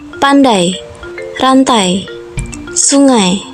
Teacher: Yang pertama, diftong naik menutup maju, ai